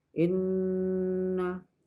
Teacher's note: hukum bacaan gunah yang mana itu dibaca dengan dengung karena di situ hukum bacaannya adalah nun tasdid, harus dibaca dengung